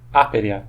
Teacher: Ou aperea, a pronúncia seria uma palavra proparoxítona.